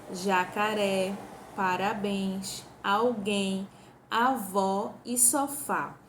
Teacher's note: uma palavra oxítona onde é que tá a sílaba tônica e ela está na última sílaba